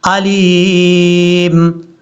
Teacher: یہاں پر جو یا ہے یہ یا مدہ ہے، اس کو لمبا کرنا ہے